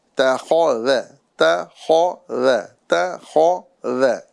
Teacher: تا کو باریک، خا کو پر، پھر ذال کو باریک